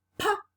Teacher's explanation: there is closure complete closure of the lips so the air resonates in the mouth and then when you open your lips the air goes out with explosion · passage to the nose has to be blocked so that's why the soft palate in this particular case has been raised blocking the entrance to the nose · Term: bilabial, oral